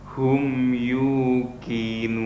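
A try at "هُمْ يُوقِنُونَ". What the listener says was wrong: Baik, qafnya harus dilafatkan terus menerus ya. Untuk qaf masih seperti kaf.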